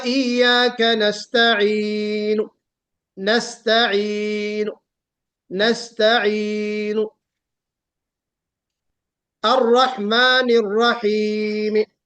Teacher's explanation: رحیمی نہیں کہنا بلکہ ہلکا سا کسرہ ظاہر کرنا ہے، نستعینو میں ہلکا سا ضمہ ظاہر کرنا ہے۔ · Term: روم